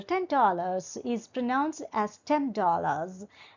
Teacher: n will be changed into M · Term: consonant assimilation